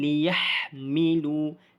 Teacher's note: Ha pedas, kita keluarkan angin.